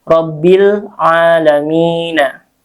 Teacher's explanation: Alamin panjang, mad arid disukun ya yang terakhirnya.